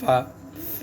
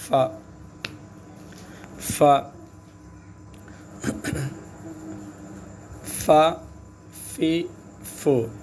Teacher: فا جو دانتوں کا اوپر کی جو دانت کی جو سامنے کی جو دانت ہے اس کی جو سرا ہے، اس دانتوں کا جو نوک ہے اس کو نیچے کا جو ہونٹ ہے، ہونٹ میں لگانا ہے اوپر کے دانت کو